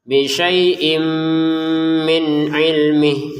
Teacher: bisaiin bertemu mim dimasukkan dengan dengungan · Nun sukun bertemu ain dibaca dengan jelas.